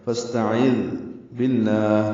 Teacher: سین ساکن پہ ہم سے، تاب جلدی سے پڑھیں گے، عین وسط حلق سے نکالیں گے، ذال نرمی سے پڑھا جائے گا. فاستعذ باللہ، لام اس میں جرارہ باریک پڑھیں گے.